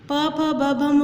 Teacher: प फ ब भ म बोलते हैं तो हमारे जो लिप्स हैं वो टच होते हैं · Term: ओष्ठ